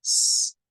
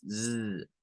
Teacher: La S sin vibración, que es S, y la S con vibración, que es Z. Entonces, esto sonará a ziz, ziz.